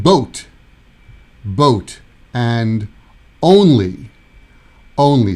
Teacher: that's the O sound like a pure o sound